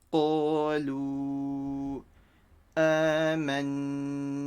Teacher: And the waw sakin stretches the dhamma letter over here with a mud. Make sure the qaf is full mouth with a q sound.